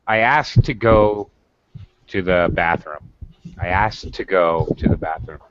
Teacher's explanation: two and say ask two yeah you probably aren't not probably you're definitely going to connect the two words uh by pronouncing the t once